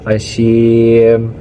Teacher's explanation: mat arid li sukun karena ada mat tabi'i yang hurufnya disukunkan dan bisa dibaca panjangnya 2, 4 atau 6 harakat